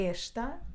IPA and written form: ɛʃtɐ (Esta)